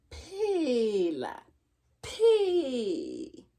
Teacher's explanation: My lips come together because this is a bilabial sound. The sound, this sound here at the beginning is a bilabial sound.